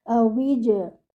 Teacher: your Jim should be read with qalqala without air.